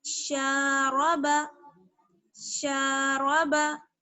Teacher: تو یہاں پر شین پر زبر ہے، اس لیے ایک الف کے برابر کھینچیں گے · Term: الف مدہ